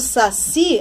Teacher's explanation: essa palavra oxítona, essa palavra com a sílaba forte no qui. Quando eu digo saci, a mesma coisa.